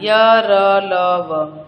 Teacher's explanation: इनका उच्चारण करते समय जीभ मुख के किसी भी भाग का पूरी तरह स्पर्श नहीं करती है। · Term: अंतस्थ व्यंजन